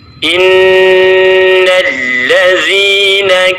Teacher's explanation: Ayat yang ke-6, innalladzi, di situ ada nun bertasydid, maka kita akan menemukan gunnah musyaddadah, yaitu kita mendengungkan bacaan pada nun bertasydid dengan tempo kurang lebih 3 harakat. Innalladzina kafaru min ahlil kitabi wal musyrikin.